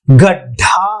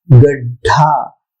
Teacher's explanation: गड्ढा में पहला जो ध्वनि ड की ध्वनि है वो केवल ड के रूप में है, ढ के रूप में नहीं है। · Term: अल्पप्राण